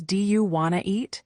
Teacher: Sometimes, sounds are dropped like the T in want to.